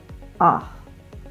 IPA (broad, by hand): ə